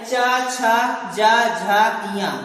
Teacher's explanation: ऐसे वर्ण जिनका उच्चारण करते समय हमारी जीवा तालु को स्पर्श करती है वह तालव्य कहलाते हैं।